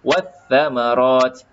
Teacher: lam tidak ada baris, maka lam ini tidak perlu disebutkan. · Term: alif lam syamsiah